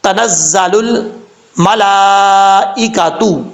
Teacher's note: زا حروف صفیریہ میں سے سیٹی کے ساتھ پڑھا جائے گا